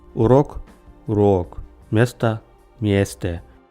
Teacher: Ударный гласный становится долгим или дифтонгом.